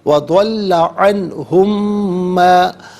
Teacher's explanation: انہم میں میم ساکن ہے اور اسے ما کی میم کے ساتھ ملائیں گے, میم کی آواز کو غننے کے ساتھ ادا کریں گے